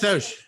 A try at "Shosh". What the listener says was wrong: not Sosh, Shosh. It's CSHSH. Shosh. Said Soch.